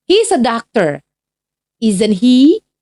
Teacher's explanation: kita akan menggunakan question tag dengan intonasi atau penekanan yang sedikit lebih rendah atau menurunkan intonasi yang dalam bahasa Inggris disebut dengan falling intonation